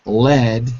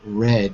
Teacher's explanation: Lead, you touch it. Red, you float.